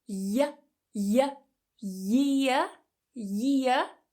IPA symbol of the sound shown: j